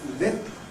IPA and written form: lɪp (lip)